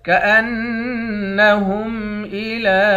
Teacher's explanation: حمزے کو نون مشدد کے ساتھ ملا کر نون پر غنہ کریں گے، لام پر کھڑا زبر ہے، ایک الف کے مقدار کھینچیں گے۔